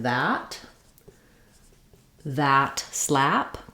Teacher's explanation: So you might pair that with a word like that slap, keeping the same A sound. When I'm saying slap, the front of my tongue is down and the back of my tongue is lifted and my jaw is fairly open. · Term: A vowel